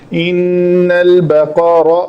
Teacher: قاف بھی موٹا ہے اور را کے اوپر زبر ہے، یہ بھی موٹی پڑی جائے گی